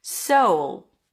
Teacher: So you have that back, dark, deep voice quality, sound quality to it. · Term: dark L